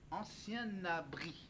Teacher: Et la dernière lettre du mot ancien, c'est le N, alors il faut prononcer le N du mot ancien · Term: liaison